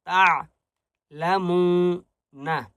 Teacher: عین کی آواز حلق سے نکالیں گے. تعلمون، وقف کریں گے.